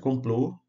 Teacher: indica a sílaba tônica da palavra com som fechado da vogal